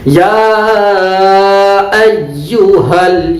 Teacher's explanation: یا پر مد کریں گے اور ایو میں حمزہ ہے، اسی وجہ سے اس کو مد منفصل.